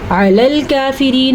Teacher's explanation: عین کا تلفظ دھیان سے پڑھنا ہے. حلق سے نکالنا ہے. کاف کھڑی زبر کا اس کا بھی دھیان رکھنا ہے.